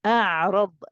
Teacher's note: We start off nice and relaxed. Then we squeeze after when we go for the ain. The ra is heavy, so we say ra.